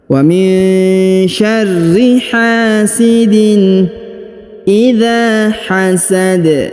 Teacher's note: huruf dza dibaca panjang dua harakat karena di depannya terdapat Alif waminyarri hasidin idza hasad hasad huruf Dal karena berada di ujung